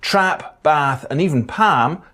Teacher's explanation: The trap-bath split hasn't happened for everybody to the same extent. So for some speakers, trap, bath and even palm have the same vowel. For others, there's just a difference in length but not quality.